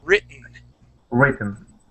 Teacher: we're gonna hide those t's it's more of a sound that we make in the back of our throat